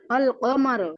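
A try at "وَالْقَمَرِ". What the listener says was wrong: আপু ওয়াল কমারি, রজের রি।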